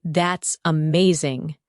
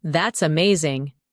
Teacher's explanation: When you say, That's amazing, your tone rises with excitement. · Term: rising tone